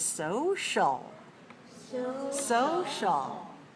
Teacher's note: social has two syllables where's the stress on the first one